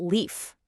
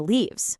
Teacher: that sharp F sound at the end kind of softens into a V sound for the plural